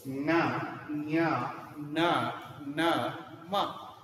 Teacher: ಮೂಗಿನ ಮೂಲಕ ಉಚ್ಚಾರಣೆ ಹೊಂದಬಲ್ಲಂತ ಅಕ್ಷರಗಳು ಅವು ಅನುನಾಸಿಕ ಅಕ್ಷರಗಳು